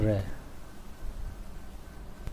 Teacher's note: लुंठित या प्रकंपित हवा जीभ से लुढ़कती हुई बाहर निकलती है, जैसे र। पार्श्विक व्यंजन जीभ का अगला भाग मसूड़ों को छूता है तथा हवा जीभ के दोनों तरफ से बाहर निकलती है, जैसे ल।